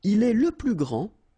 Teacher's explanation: Okay, so phonetically what you can hear is that this first form here for the masculine, grand, so you don't pronounce the final D